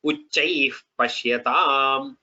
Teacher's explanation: the visarga changes to what we call as upadhmaniya, which is the sound is like F, the letter F in English, very similar to that, but it just the wind comes out of the lips, that's all.